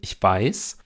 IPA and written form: ɪçˈv̥aɪ̯s (ich weiß)